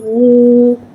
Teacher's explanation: واو کو ایک الف یعنی 3 حرکات کے برابر کھینچ کے پڑھیں گے۔ واو کو ہونٹوں کی گلائی کے ساتھ ادا کر کے پڑھیں گے۔ واو ساکن سے پہلے پیش آ رہا ہے، وا مدہ ہو رہا ہے، لہٰذا وا مدہ کو ایک الف یعنی 2 حرکات کے برابر کھینچ کے پڑھیں گے اور پیش کو ہونٹوں کی گلائی کے ساتھ ادا کر کے پڑھیں گے۔